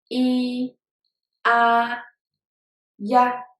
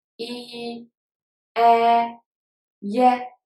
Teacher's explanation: So as I pronounced before, start from the first vowel, move to the second vowel. The first vowel you have to pronounce it very short and fast and light. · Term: compound vowels